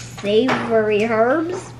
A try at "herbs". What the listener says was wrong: It's herbs. You don't pronounce the H.